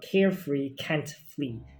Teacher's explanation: So I kept the plosive, the k sound, and the and the fricative sound, but the laterals are interchanging, being the R and the L's